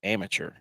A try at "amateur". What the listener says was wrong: It's amateur. Amateur. I mean, you're pronouncing the tour like the PGA Tour, but it's amateur. Amateur.